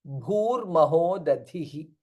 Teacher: bha is mahaprana and dha is also mahaprana